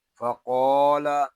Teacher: لام کو ہم کھینچ کر پڑھیں گے کیونکہ یہاں مد متصل ہو رہا ہے۔ فقال، یہاں پہ قاف پر ہے اور الف مدہ ہوگا، اس لیے قاف کو ہم ایک الف تک کھینچ کر پڑھیں گے